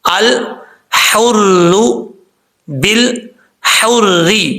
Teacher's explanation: ال کے بعد لام کے بعد جو ہا ہے یہ باریک ہے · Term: ہا باریک